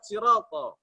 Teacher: Siroto itu panjang 2 harokat